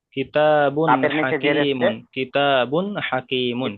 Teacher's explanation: হরুফে হালকের ছয়টি অক্ষরের মধ্যে একটি অক্ষর আছে এর জন্য একে বিনা গুন্নায় ইজাহার করে পড়তে হবে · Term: বিনা গুন্না ইজহার